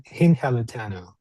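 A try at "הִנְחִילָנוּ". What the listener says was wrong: Perfect. You would sound flawless in modern Hebrew. Beautiful. Beautiful.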